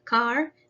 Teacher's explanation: is produced with the mouth uh wide open and the tongue is low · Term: long sound ah